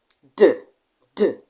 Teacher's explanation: releasing the sound with an explosive release